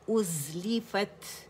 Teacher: حمزہ کو فار throat سے ادا کریں گے. او کی آواز نہیں آنی چاہیے